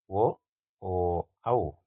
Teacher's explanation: ಕಂಠ ಮತ್ತು ತುಟಿಗಳ ನೆರವಿನಿಂದ ಹುಟ್ಟುವ ವರ್ಣಗಳನ್ನ ನಾವು ಕಂಠೋಷ್ಟ ಅಂತ ಕರೀತೀವಿ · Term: ಕಂಠೋಷ್ಟ ಧ್ವನಿಗಳು, ಕಂಠೋಷ್ಠ್ಯ ಧ್ವನಿಗಳು